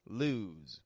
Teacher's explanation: So the S sounds like a Z in the word lose. L-O-S-E. S changes to a Z sound.